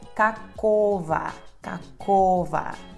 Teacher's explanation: Kakogo, só que a sílaba tônica é O, G se lê como V, por causa dessa regra que estou explicando. O último O se torna A, por causa da redução também, então é kakova, kakova.